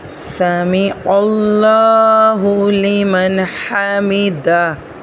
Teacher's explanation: سمیع اللہ لمن حمدہ، یہاں پر بھی ہا کا دھیان رکھنا ہے، حلق سے ادا کرنا ہے